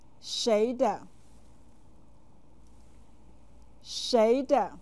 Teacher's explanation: shader is said with the second and neutral tones